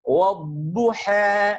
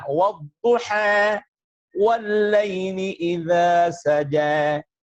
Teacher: Taklil itu merupakan bacaan antara fathah dengan kasrah, akan tetapi kecenderungannya terhadap fathah lebih banyak, sehingga disebut dengan imalah, kemiringannya itu sedikit, yang disebut dengan taklil.